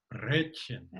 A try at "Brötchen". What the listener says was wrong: Too long. Brötchen. Now look at the little O with the little dots on top. It's actually an Ö. You have to kiss for it.